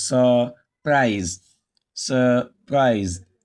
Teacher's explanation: We pronounce the UR as long But in this word, it's a verb and it contains two syllables, surprise, surprise. The rule says stress the second syllable, don't stress the first. In this situation now that you are not stressing the first syllable, the UR is pronounced as a sure.